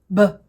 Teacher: For B, there's one more part. Your voice box is on. Inside of your throat, your vocal cords are coming together and vibrating while you make this sound. · Inside of your throat, your vocal cords are coming together and vibrating while you make this sound. If you put your hand on your throat while you're making the b sound, you should feel a little bit of vibration. Again, it's a quick sound, so it'll be pretty fast, but you can put your hand there and feel your throat vibrate. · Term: noisy sound